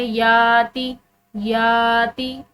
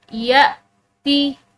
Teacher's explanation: तो अलिफ को नरमी और आसानी से पढ़ा जाता है लेकिन जो हमजा होता है इसको झटके के साथ पढ़ा जाता है। यानी कि अगर हम इसको पढ़े याती, याती तो ये गलत होगा, बल्कि इसको झटके के साथ यती, ठीक है, इस तरह पढ़ा जाएगा।